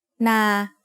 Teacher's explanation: is low class initial consonant plus life ending equals mid tone a mid tone is pronounced at a flat pitch in the middle of your regular vocal range